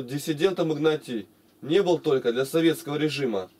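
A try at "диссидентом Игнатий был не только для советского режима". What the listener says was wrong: Нет, не был. Ты зачем был, перекидываешь? У тебя буква «не», она тебя подкоролит. Вот на глазах буква «не» стоит, ты в другом месте, она у тебя автоматически перекидывается.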